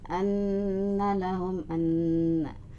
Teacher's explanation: anna gunnah ditahan di hidung ya, 2 ketukan